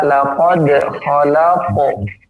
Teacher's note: ada qaf, ya, memiliki sifat tebal, jangan ditipiskan